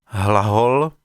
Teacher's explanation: Enfin, le H de hlahol, est une glottale sonore sans correspondante sourde